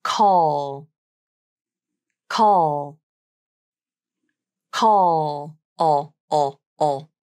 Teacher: But the dark L is made differently, and it sounds very different as well. The dark L is made primarily with the back of the tongue as it pulls back and down. And you may feel the sensation that the back of the tongue raises towards the back of the throat.